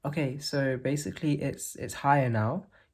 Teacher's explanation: I'm not raising my pitch or anything. This is just how it sounds when your larynx gets raised. You can see like the Adam's apple is less prominent.